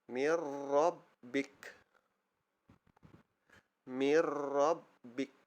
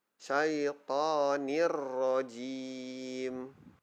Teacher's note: memasukkan sebutan Nun atau tanwin ke dalam huruf ro atau lam tanpa dengung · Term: Idgham billaghunnah